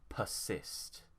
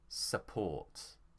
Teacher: the stress is on cyst so we'd say persist